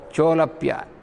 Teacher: So, cha, ulapya. Cha is ending with A and ulapya is starting with U. A plus U. Therefore it became O.